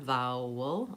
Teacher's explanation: A very dark L at the end, vowel, almost no vowel sound there in the second syllable of vowel